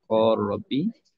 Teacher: idgham kabir pada lam bertemu dengan ra